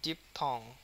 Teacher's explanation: ডিপের উপরে প্রচুর স্ট্রেস, থং এর উপরে কিন্তু কম